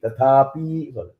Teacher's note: P is hrasva short vowel. You should not elongate the P.